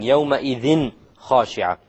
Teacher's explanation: Clarity, because it's followed by a kha. And kha is of the letters of the throat